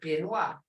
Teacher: You're not saying it both words. You're not exactly saying P, you're not exactly saying B, but you're in between that.